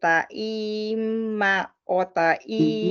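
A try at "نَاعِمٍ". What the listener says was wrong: No, No, it's not a time in the first place, it's a noon.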